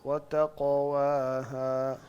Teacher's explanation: قاف کو بھی آپ گلے سے نہ نکالیں، قاف کو زبان سے نکالیں